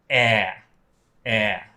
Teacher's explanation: your jaw is really low, your tongue is down and wide.